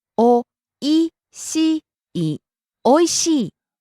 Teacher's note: rising on the second syllable E, falling on the last syllable E.